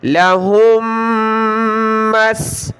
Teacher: میم مشدد کے ساتھ، میم ساکن کو چھوڑ دیں گے، ناک میں آواز پیدا کریں گے